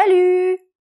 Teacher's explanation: we don't pronounce the final T